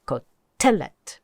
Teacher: you want to hear that accent on the middle syllable